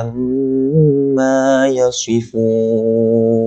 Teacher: amma mim kita kena dengung 2 harakat sebab mim yang bertanda syaddah.